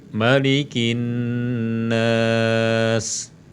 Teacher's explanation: Harusnya ma-nya ini pendek, an-nasnya yang panjang, ya.